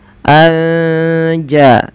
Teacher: menyamarkan suara nunnya kepada huruf ja, anja, sambil ditahan 2 harokat. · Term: Ikhfa Hakiki, ikhfa hakiki